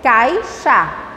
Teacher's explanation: Tendo 2 sílabas, o A e o I ficaram unidos. Sendo aí, a gente tem ditongo.